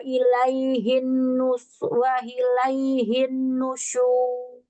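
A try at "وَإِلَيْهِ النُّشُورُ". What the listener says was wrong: Guna nun tasydid ya. Lahan khafi sih, teman kan kalau udah tahu ilmunya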